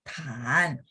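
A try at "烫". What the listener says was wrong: Nada empat. Belum, belakangnya masih naik. Tan.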